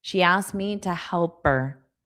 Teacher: So this T is getting dropped in connected speech. She asked me to help her because it just creates too much of a pause if I pronounce it fully.